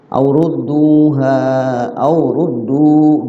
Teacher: kalimat terpisah jadi mad jaiz munfasil dibaca panjang tapi pilihannya boleh 2, boleh 4, boleh 5 ya, jaiz boleh, artinya pilihannya boleh di antara 2, 4, 5.